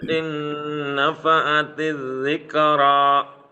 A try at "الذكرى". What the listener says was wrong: Zikra, jangan zikra, bukan qalqalah di situ, hati-hati. Zikra.